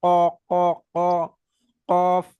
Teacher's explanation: জিভের গোড়ার উপরের অংশের সাথে, উপরের তালুকের সাথে লাগিয়ে, অর্থাৎ টাচ করিয়ে পড়তে হবে।